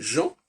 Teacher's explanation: on n'entend pas le N, c'est Jean